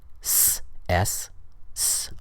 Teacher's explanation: Some consonants like S, S, S are voiceless. There's no vibration in the throat, in the vocal folds. Other consonants like Z, the Z sound in English, are voiced.